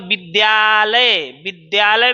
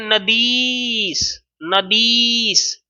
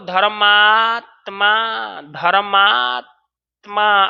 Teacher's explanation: आपको शब्दों के मध्य में सुनाई देना चाहिए आ ई और ऊ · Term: दीर्घ स्वर संधि